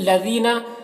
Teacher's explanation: जाल को बारीक पढ़ना है और या मद्दा है यहाँ पर।